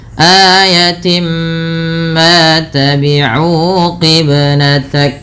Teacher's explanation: Kemudian pada lafal timma ini merupakan bacaan idgham bi gunnah sehingga bunyi awalnya tin bertemu dengan mim, suara tinnya masuk kepada huruf mim, maka dihukumi dengan bacaan idgham bi gunnah dengan menahan bunyi suara nya sepanjang 2 harakat.